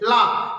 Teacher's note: यानी जब हम ला का उच्चारण करते हैं, ला यानी झटके के साथ हमारी जो जीभ मुड़ जाती है ऊपर की तरफ और जो आवाज है उसके किनारे से निकल के आती है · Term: पार्श्विक व्यंजन